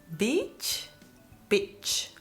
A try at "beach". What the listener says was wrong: Nice. Very good.